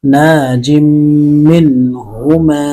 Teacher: نون الف زبر نا، جیم میم دو زیر جم، ناجم، میم نون زیر من، ناجم من، ہا پیش ہو، ناجم منہ، میم الف زبر ما، ناجم منہما. ایک الف کے برابر غنہ ہوگا